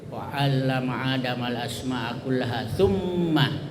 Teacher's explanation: Ya, gunnah itu bertasdid, mim bertasdid atau nun bertasdid, yaitu bacanya dengung, wajib didengungkan dengan panjang. Ya, umpamanya di sini wa 'allama adamal asma'a kullaha tsumma, ya tsumma itu mim bertasdid.